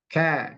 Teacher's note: Jadi pangkal lidah ini diturunkan ke bawah sedikit dari tempat keluar huruf qaf. Nah, kalau kan dia menyentuh langit-langit yang keras, yang lunak, mohon maaf, yang lunak. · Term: kaf